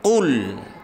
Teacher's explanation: qul ya harus kita baca dengan suara tebal. Qul, bukan kul.